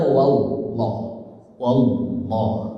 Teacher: Wallahu huruf wau harakatnya fathah berarti tak khim tebal. Tebalnya pada wallah. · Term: tafkhim